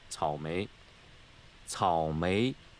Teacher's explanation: Third tone in front of a rising tone sounds like a rising tone anyways.